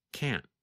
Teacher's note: Sometimes you can hear the letter T when we say can't, but other times it is harder to hear, and it just sounds like this, can't.